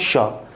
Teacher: जैसे मैं बोलता हूँ श, तो श जैसे ही बोल रहा हूं तो उसमें क्या हो रहा है, उसमें जैसे ही मैं इसको बोलता हूं श को, वो हमारा मूर्धा में टच हो रहा है, ठीक है। तालु से जो साइड वाला है, जैसे तालु से जब मसूड़े वाला है, मसूड़े के अंदर के हिस्से वाले को क्या कर रहा है, वो टच कर रहा है, ठीक है।